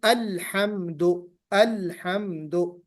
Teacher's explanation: लाम पर कलकला नहीं